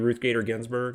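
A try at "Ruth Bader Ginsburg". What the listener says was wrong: You said Gator instead of Bader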